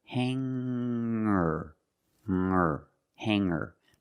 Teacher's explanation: When I change these words with eer, I don't pronounce the g sound.